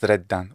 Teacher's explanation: with that really strong geminated D, sounds fantastic. When it comes to vowel length, I feel like there's a distinct reduction of the final vowel length here in the word banoniae into something like banoniae, or simply banoniae.